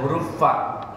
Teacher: Huruf fa dalam bahasa Arab bukan p tapi huruf f. F ya.